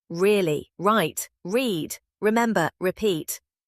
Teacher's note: English R is produced from the back of the mouth. Your tongue does not touch anything. It curves up slightly in the center without touching the roof of your mouth. Air flows around it. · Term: The R sound